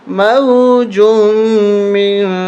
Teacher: موجم من اس طرح نہیں پڑھیں گے، من ناک میں آواز لے جائیں گے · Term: اخفا